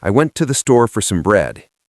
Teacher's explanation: A student listening to a movie tries to hear, "I went to the store for some bread." That's 8 words. An American speaker only really says 3 distinct words: went, store, bread. The rest is just noise.